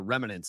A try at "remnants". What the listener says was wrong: It's remnants, not remnants. You added a syllable like I did Konowinski.